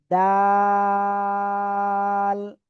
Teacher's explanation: জিহ্বার আগা উপরে দুই দাঁতের গোড়ায় লাগান, লাগিয়ে এক দুই তিন আলিফ টেনে পড়বো